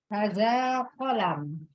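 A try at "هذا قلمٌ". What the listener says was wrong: Iya, hadza qalamun. Hanya dibaca panjang ya, ada matnya. Hadza qalamun.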